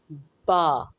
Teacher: दोनों होंठों के गीले हिस्से से बा अदा होगा। होंठ फ्लैट होंगे।